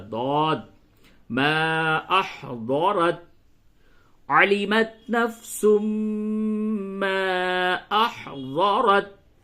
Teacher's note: زبان کا جو کنارہ حصہ ہے، سائیڈ کا جو حصہ ہے، اس کو داڑھ سے جب لگاتے ہیں تو ضاد ادا ہوتا ہے